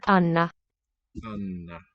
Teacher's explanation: lengthen those double letter consonant sounds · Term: long N